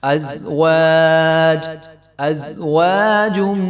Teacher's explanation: واو کے آگے جو ہے الف ہے تو اس کو ایک الف برابر لمبا کریں گے